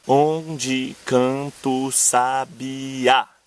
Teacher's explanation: Nesse caso a gente conta até o A final, porque essa sílaba é a tônica. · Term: sílaba tônica